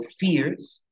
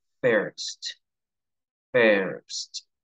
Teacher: Por lo tanto, alteran el sonido final de la I. Y la I no suena como I, sino que viene a sonar como una E.